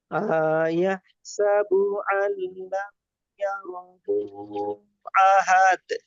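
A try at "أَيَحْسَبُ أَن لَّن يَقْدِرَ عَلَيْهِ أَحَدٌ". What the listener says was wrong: মাশাআল্লাহ, আপনি জাস্ট প্রথমে হামজার উপর টান দিয়েছে, আয়াহসাবু পড়েছেন। আর টান হবে না, আয়াহসাবু, ঠিক আছে জি। একটু খেয়াল রাখবেন হামজার উপর যে টানটা হচ্ছে, টানটা যেন না হয়, ঠিক আছে জি।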